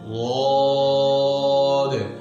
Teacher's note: رخوت ہمیں بتا رہی ہے کہ آواز جاری ہے